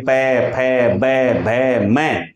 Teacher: प बोलने के लिए दोनों होठों को मिलाना ही पड़ेगा अगर होट नहीं मिलेंगे तो फिर प का उच्चारण नहीं हो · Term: ओष व्यंजन